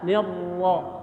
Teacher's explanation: ada ro bertasdid, tahan, ya, lidahnya ke atas